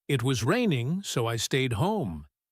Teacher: It sounds almost like one long word, raining so. You have to listen for that little SO sound.